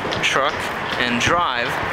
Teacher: What happens is that T and D, when they're released, they have a little bit of friction against the hard palate.